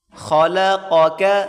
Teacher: خا کو موٹا کریں گے، اس کے بعد قاف، بڑی قاف اس کو موٹا کریں، پھر اس کے بعد چھوٹی قاف باریک کر کے پڑھیں گے۔